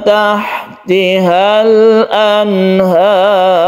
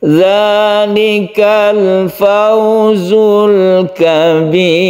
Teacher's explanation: Ketika ro yang disukun sebelumnya ada kasroh maka dibaca tipis. Kalau yang ini anhar tebal, kabir ro-nya dibaca tipis karena sebelumnya ada kasroh.